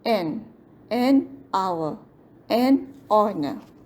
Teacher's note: An elephant, an umbrella, an ear, an eraser, an hour. The H at the beginning of hour is silent, so it sounds like it starts with a vowel.